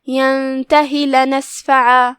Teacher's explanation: دھیان رہے کہ ہم اپنی آواز لمبی نہیں کرتے تاکہ یا نہ ظاہر ہو. ہم جیسے ہی ہا کی ادائیگی کرتے ہیں سیدھا ہم حرف اللام پڑھیں گے.